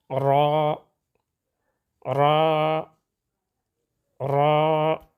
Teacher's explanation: را کی ادائیگی میں حقیقی تکرار پیدا نہ ہو. را را را، درمیانہ آواز، نہ نرم نہ سخت، توسط کی وجہ سے